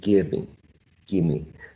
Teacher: So a reduction also can mean that the vowel, which in this case is a long vowel, is shortened, right? In terms of length.